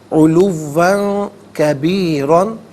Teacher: کبیرن میں را پر 2 زبر کی تنوین پر کر کے پڑھا جائے گا